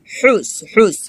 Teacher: হুস হাটা গলার মাঝখান থেকে চাপ দিয়ে উচ্চারণ করতে হবে